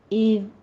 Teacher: اذ کنتم میں ذال کو نرمی سے پڑھتے ہوئے از نہیں کہنا ہے